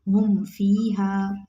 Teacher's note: हामीम पेश हुम, फाया ज़ेर फ़ी, हा अलिफ ज़बर हा, फ़ी हा, हुम फ़ी हा। मीम साकिन को ज़ाहिर करके पढ़ेंगे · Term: इजहार शफ़ी